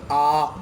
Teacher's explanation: विवृत स्वर के उच्चारण में पूरा मुंह खुल जाता है